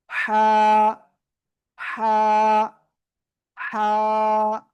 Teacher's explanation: গলার মধ্যকান চেপে আপনার উচ্চারণ করতে হবে। · ওকে, আপনাকে এভাবে উচ্চারণ করতে হবে কিন্তু। হা, গলা চেপে মুখ দিয়ে হালকা বাতাস বের হতে হবে, না হলে হবে না।